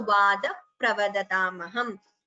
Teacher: The visarga followed by pa. It is upadmaniya.